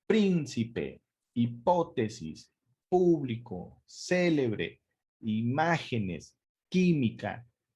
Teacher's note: la sílaba tónica está en la ante penúltima sílaba de todas todas son esdrújulas